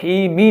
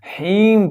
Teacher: حیم کی میم کے نیچے زیر ہے تو وقف کی حالت میں حیمی نہیں پڑھیں گے، اس کو حیم پڑھ کر اس جو میم کے نیچے زیر ہے اس کو ہم نے ساکن کر دینا ہے۔